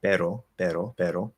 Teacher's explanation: all i'm doing there is basically a flap d um and i know that it can sound a bit better